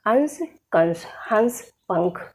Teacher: अनुस्वार के उच्चारण में हवा नाक से बाहर निकलती है, जबकि अनुनासिक के उच्चारण में हवा नाक और मुंह दोनों से बाहर निकलती है।